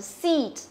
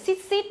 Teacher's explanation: Đấy, không phải là sit, sit đâu nhá, sit là sao mà là seat, seat, ok? Đọc căng miệng ra một tí, seat, nó là âm Y dài. Y dài thì nó luôn luôn có cái dấu hai chấm trong phiên âm của nó.